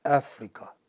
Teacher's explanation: Where is the stress in this case? In the first syllable in Africa.